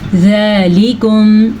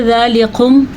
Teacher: زال کو نرمی سے پڑھنا ہے اور یہ باریک کاف ہے، یہ موٹا کاف نہیں ہے